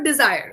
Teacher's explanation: So the R should be touched and left.